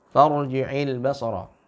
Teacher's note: ra-nya tebal karena diselingi terlebih dahulu dengan tanda baca fathah